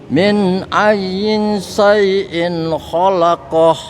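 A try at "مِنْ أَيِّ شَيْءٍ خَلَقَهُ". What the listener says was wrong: Yi-nya enggak yin. Ayyi.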